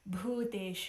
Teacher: this bhu, this is called a mahaprana sound, an aspirated sound. So you add a spurt of air along with the consonant.